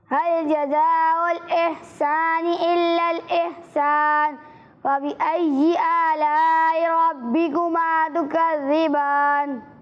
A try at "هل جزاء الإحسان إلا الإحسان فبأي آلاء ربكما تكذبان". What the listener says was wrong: اچھی کوشش کی آپ نے, لیکن بیٹا یہاں پر مد متصل ہو رہا ہے. ٹھیک ہے, تو اسے 2 یا 2.5 الف تک کھینچ کر پڑھنا ہے.